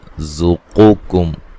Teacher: یہاں قاف کو موٹا ادا کریں گے، اس کاف کو باریک پڑھنا ہے